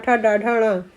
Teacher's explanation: ट वर्ग को मूर्धा से बोलते हैं